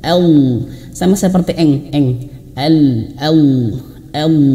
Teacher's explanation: ketika mengucapkan al al al al maka pangkal lidahnya dinaikkan